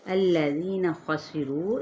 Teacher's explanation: الذین خسروا، ری پہ یا مدہ، خوا پر پڑا جائے گا، سین پہ سیٹی کو واضح کریں، رو اس کو ہم نے 4 حرکت کھینچنا ہے، اگر تو وقف کر لیا تو پھر 6 حرکت کھینچیں گے۔